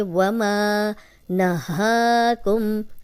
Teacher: ना नून की ज़बर लंबी नहीं होगी, हा पे खड़ी ज़बर है, ये 2 हरकत लंबा करेंगे